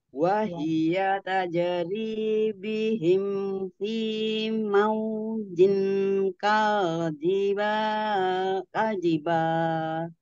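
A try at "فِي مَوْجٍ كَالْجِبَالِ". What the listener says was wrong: Kal jangan mantul. Tahan di mahrotnya apa? Tepi lidah depan ya, bagian depan. Itu nempel di langit-langit atas. Ditahan dulu. Supaya nggak mantul ya.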